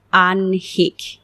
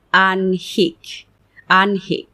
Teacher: যদিও এটির বানানে হ প্লাস ন অর্থাৎ হ আগে উচ্চারিত হবার কথা ছিল। কিন্তু উচ্চারণ করতে গিয়ে দেখা যায় এটির উচ্চারণ হলো আনহিক। নটি আগে চলে আসছে। তাহলে এর সঠিক উচ্চারণ হল আনহিক।